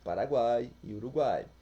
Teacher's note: Oral, a palavra é pronunciada e o som do encontro vocálico tem o ar passando somente pela boca.